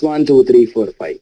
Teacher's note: so for enumerations we use Rising tone